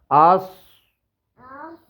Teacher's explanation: یہ آواز موٹی بھی ہوگی اور سخت بھی ہوگی، آس ٹھیک ہے، دونوں دان ملیں اور اس کی جو ہے نا وہ کہاں لگے؟ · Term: صاد